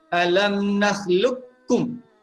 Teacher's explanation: Baik, di sini kita boleh baca sama ada dibaca dengan idgham kamil ataupun idgham nakis. Idgham kamil ni maksudnya kita masukkan huruf qaf itu ke dalam huruf kaf secara sempurna.